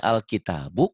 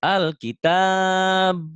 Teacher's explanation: Tapi bukan dalam tulisan, dalam bunyi. Asalnya Alkitabu karena dihentikan jadi Alkitab. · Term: madari disukun